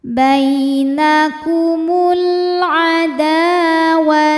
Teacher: adalah Mad Thobi'i dahiri sebab ada Alif yang sebelumnya berharakat fathah maka huruf Dal ini kita panjangkan dua harakat saja